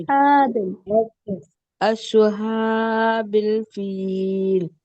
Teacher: नहीं, शीन निकल रहा है, शीन की आवाज नहीं आए, स्वाद की निकालिए